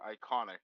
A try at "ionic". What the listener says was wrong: Ionic. There's no C.